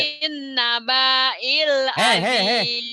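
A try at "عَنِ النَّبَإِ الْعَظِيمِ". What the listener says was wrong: Banyak pendek. Nabail. Kan nggak ada pemanjang. Kan alif ini kan hidup. Nabail.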